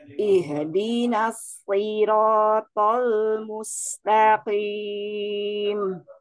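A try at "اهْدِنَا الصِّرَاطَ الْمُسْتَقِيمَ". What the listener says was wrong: sukunnya jangan ada pantulan itu tadi ada sedikit sekali ihdi ihdi gitu maunya alirkannya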